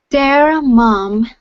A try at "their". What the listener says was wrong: Okay, give me a good TH.